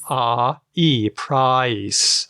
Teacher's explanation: I start with an a and I go to an e sound.